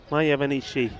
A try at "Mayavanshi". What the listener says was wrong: It's Mayavanshi. You said Mayavanishi.